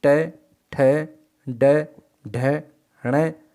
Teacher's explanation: ऋकार टू अर्थात टवर्ग, र और स, तो इनका उच्चारण स्थान होता है मूर्धा, इसलिए इन्हें मूर्धन्य वर्ण कहा जाता है